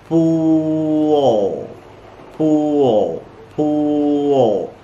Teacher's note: Why? Because there are two vowel sounds before the sound L. So you have to add schwa. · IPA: /ʊ/